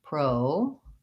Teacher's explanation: I have first syllable stress and I use a clear O, pro, and then the deuce is shorter and relaxed.